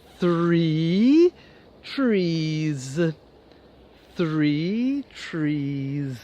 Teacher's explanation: 3 has your tongue between your teeth